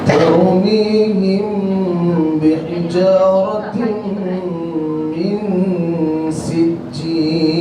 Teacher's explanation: Gunnah dia ada, kemudian dia punya mim kita kena renggangkan kerana nak menyembunyikan huruf mim yang disebut sebagai ikhfa. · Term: ikhfa asy-syafawi